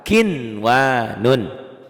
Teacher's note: Kinwanun, ini tulisannya kinwanun, dibacanya juga tetap kinwanun. Tanpa dengung, tanpa ditahan. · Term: idhar mutlak